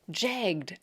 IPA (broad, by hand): ʤæɡd